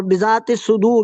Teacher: اور را کے اوپر جب وقف کریں گے تو یہ مد عارض سکون ہو جائے گا، یہاں 2 4 یا 6 حرکت کریں گے، اور را کو مفخم پڑھیں گے · یہاں لام کا سواد میں ادغام ہوگا